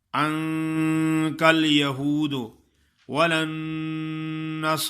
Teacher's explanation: نون مشدد ہے، اس پہ شد ادا کرنی ہے سختی سے